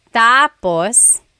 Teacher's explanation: So, when it's tap tapus, when the emphasis is at the end, tapus, that means finished. When the emphasis is on the first syllable tapos then it means next